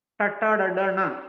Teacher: And cerebrals, Tata, Dada, Na. The tongue is twisted inside and speaks upward.